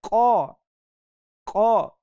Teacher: जुबान की जड़ और ऊपर का तालू का नरम वाला हिस्सा जो जुबान की जड़ के साथ ही ऊपर है वहां से इसको पढ़ना है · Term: नुक तों वाला